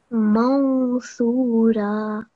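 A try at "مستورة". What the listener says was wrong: Excellent. That was really good.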